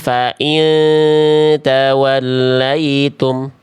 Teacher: Nun sukun ketemu ta ikhfa, jangan sampai nunnya masih bunyinya jelas.